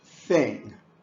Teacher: the unvoiced pronunciation just uses your breath as you force it between your teeth and your tongue